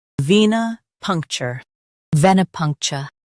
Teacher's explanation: ven ih punk chuh venipuncture ven ih punk chuh venipuncture Stress punk and keep cher light. · Stress punk and keep ch light.